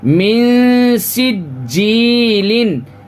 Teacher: اب دیکھیے یہاں نون ساکن ہے، نون ساکن کے بعد حروف اخفا کے 15 حرفوں میں سے سین ہے. تو اب یہاں پہ ہمیں اخفا کرنا ہے، ناک میں آواز چھپانا ہے